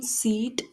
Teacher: E in seat is high front unrounded.